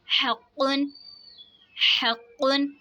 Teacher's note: क़ाफ हुरूफ मुस्तालिया इसलिए इसको मोटा पढ़ेंगे और इसमें खूब कलकला ज़ाहिर करके पढ़ेंगे